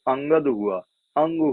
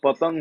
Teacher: अनुस्वार पूर्ण अनुनासिक ध्वनि है